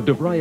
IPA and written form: dəˈvraɪ (DeVry)